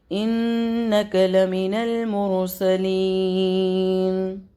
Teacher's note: یائے مدہ کی ٹائمنگ میں نے آپ کو بتائی تھی، کھڑا زیر یا یائے مدہ کی ٹائمنگ ہوتی ہے 2 سیکنڈ، تو 2 سیکنڈ تک اس کو پل کریں گے، لیکن یہاں اس آیت ختم ہو رہی ہے اور ہم نے یہاں پہ وقف کرنا ہے تو ہم یہاں پر مد عارضی لگاتے ہوئے اس کو 3 الف تک پل کریں گے۔ مد عارضی کہتے ہیں جو کہ حروف مداز کے بعد پہ جب ہم وقف کرتے ہیں تو اس کے بعد والے لیٹر پہ کو جب ہم سائلنٹ کر رہے ہوتے ہیں تو وہاں پر مد عارضی لگتی ہے، جس کی ٹائمنگ ہوتی ہے 3 سیکنڈ تک۔